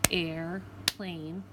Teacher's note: Now the second part is tricky because they're talking about long A's, but because of the R, you're not actually going to hear it really say A. You're going to hear more air. They still consider that a long vowel sound.